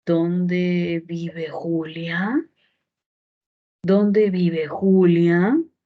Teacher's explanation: ese tono descendente, debo cambiarlo hacia arriba para ver si hay otro significado